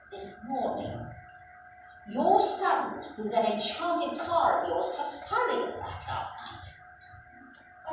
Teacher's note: she pronounced the words your sons and also enchanted cars more slowly and deliberately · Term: Emphasis